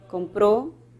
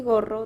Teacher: La K sería una oclusiva velar sorda y la G sería una oclusiva velar sonora